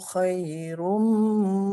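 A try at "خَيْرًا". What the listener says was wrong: Khairam. Fathah ya, fathah tanwin ya. Khairam.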